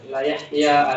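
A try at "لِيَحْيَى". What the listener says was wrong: Li bukan la. Enggak, bukan la Yahya. Li.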